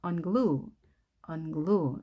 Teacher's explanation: 자, 이때는 뒤에 강세가 있겠죠.